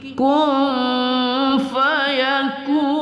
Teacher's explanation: Yaqulu lahu kun nun sukun bertemu fa kita dengungkan pada ikhfa hakiki